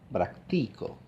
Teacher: digo práctico que en castellano es una voz de tres sílabas la segunda sílaba es la que carga con el tono alto verdad digo práctico la nota más aguda está en el medio